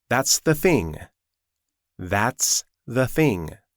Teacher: One word uses the voiced sound and the next uses the unvoiced sound.